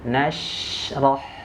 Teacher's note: Nah, dia sifatnya rokhwah harus mengalir, tidak boleh dipantulkan.